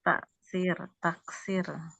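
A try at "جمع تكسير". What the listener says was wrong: Taksir. Bukan naksir ya, Bu. Taksir.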